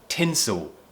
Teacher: tongue's going up and curling back slightly, and we produce this ooh sound. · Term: dark L